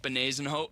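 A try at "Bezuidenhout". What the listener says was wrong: No, that's not right. It's there's a D before an N. Isn't there?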